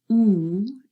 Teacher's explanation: ooh is a closed vowel sound the lips are relatively close the tongue is more raised